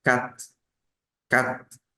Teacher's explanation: cuando hablan muy rápido los franceses esa t al final casi no suena es muy poco entonces van a pronunciar este número como Cat